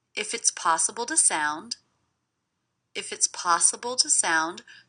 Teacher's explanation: The word to is definitely reduced to the schwa, so I may mark that, so I don't forget to reduce it.